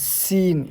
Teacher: سین میں سیٹی کی آواز نکلے گی۔ یہ سین ہے، سین، یہ بھی زبان کی نوک کو جب نیچے والے دانتوں کے اندرونی حصے پر جب لگائیں گے تو سین نکلے گا، سین، ٹھیک ہے۔